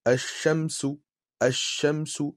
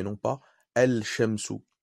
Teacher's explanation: Pour les lettres solaires, on ne prononcera pas le lam. Et on compensera en mettant une shadda sur la lettre qui suit.